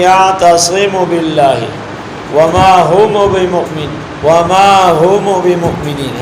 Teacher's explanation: میم ساکن کو تھوڑی سی حرکت دیتے ہیں